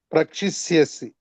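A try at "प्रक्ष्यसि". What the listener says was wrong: క్ష అయింది. ఈ క్షి ఎందుకు వస్తుంది రాదు. టూ మెనీ థింగ్స్ చేంజ్ అయితే రావద్దని చెప్పినాను కదా. ప్రక్ష్యసి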